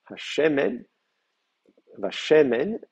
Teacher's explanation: Et Sur Shemen, c'est un Kadesh, ségolé, donc l'accent reste sur le shin